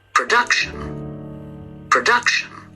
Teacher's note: Production is also read on the second syllable